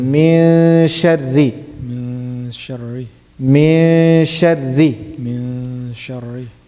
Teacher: Not min, I'm not pronouncing the noon.